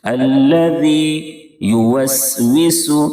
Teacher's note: دونوں سین میں سیٹی جیسی آواز نکلے گی، واو کو ہونٹ گول کر کے ادا کریں گے